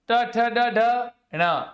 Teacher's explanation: ट वर्ग ट ठ ड ढ ण, र से रस्सा, मूर्धन्य स, इन सब का उच्चारण कहां से होता है? मूर्धा से।